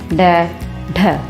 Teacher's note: जिन व्यंजनों का उच्चारण जीभ ऊपर उठकर मूर्धा को स्पर्श करते हुए नीचे की ओर गिरती है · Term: उत्क्षिप्त व्यंजन